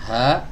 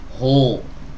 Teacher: huruf H yang ini ha yang keluar dari tenggorokan bagian bawah ini adalah huruf tipis ya Kalau seandainya di dibaca tebal maka suaranya jadi begini huhuhu